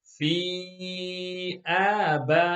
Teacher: there are two stretches, two muds, and one ghunna at the end on the noon shadda.